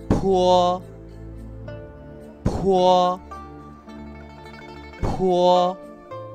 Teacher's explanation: La P se pronuncia igual que en español, pero esta vez expulsamos mucho aire.